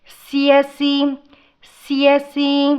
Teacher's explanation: స కింద య వత్తు వచ్చినప్పుడు కొంచెం ఒత్తి పలకాలండి